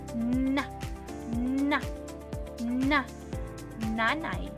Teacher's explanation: Sa pagbigas ng letrang n sa punto ng artikulasyon na pangipin at paraan ng artikulasyon na pailong